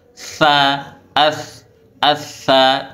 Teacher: Ardu athqalaha, ingat ujung huruf tha, ujung lidahnya ditempelkan di gigi seri atas, ujung gigi seri atas. Tha, Atha, bukan digigit, bukan tapi atha, ya.